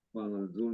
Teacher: Kemudian di ini setelah doma ini berhadapan dengan ro sukun, sehingga bunyinya menjadi besar gitu. Tafkhim ya, tafkhim atau tebal.